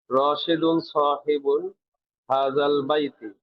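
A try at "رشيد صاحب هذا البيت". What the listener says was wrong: শব্দের শেষের হরকতটা স্পষ্ট করে দেবেন। আবার বলেন।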